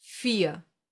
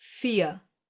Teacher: the silent R, the one that gets pronounced like a reduced A and is found in words ending in ER